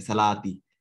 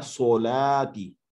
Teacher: सौद भी हम ओ की आवाज में पढ़ेंगे, मुंह को, अपने होंठों को गोल करके पढ़ेंगे